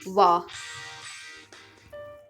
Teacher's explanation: जो दंत और ओष्ठ दोनों जरूरत पड़ेगा, दांत और होठ, वो है आपका व। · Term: दंत ओष्ठ